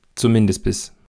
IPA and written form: t͡sʊˈmɪndɪsb̥ɪs (zumindest bis)